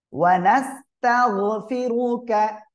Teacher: ওয়া নাস্তাগ গয়েনটা মোটা আওয়াজে হবে